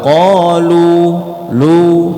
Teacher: ketika dia di waqaf berhenti, qalu, lu-nya itu jangan dibaca 4, tapi cuma 2. Qalu, lu, cukup. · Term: 2 harokat